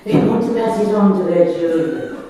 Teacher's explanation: you can just hear the breathy Margaret Thatcher pass, they want to pass it on to their children.